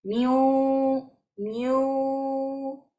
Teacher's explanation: Miun waliyin, miun wa. Y en la wau vamos a dar el sonido nasal o la gunna. Miu, miu. El sonido debe salir por la nariz.